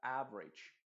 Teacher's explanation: Es como si la E se eliminara completamente y la A se pronuncia más como una I